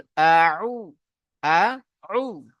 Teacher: যখন উ বলবো তখন একটু গলাটা চাপ দেব। গলাটা চাপ দিলে আমার এখানে আইন বার হয়ে যাবে।